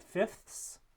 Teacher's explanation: you have three fricatives in a row there which can be difficult to produce so some speakers might say fifths or just drop that sound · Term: dissimilation